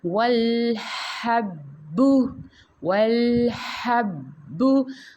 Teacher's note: اس کو مضبوطی سے پڑھا جائے گا کیونکہ یہاں پہ تشدید آ رہی ہے